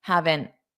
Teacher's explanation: I just put my tongue in the T position, but I don't push it out because I don't want a puff of air. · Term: flap T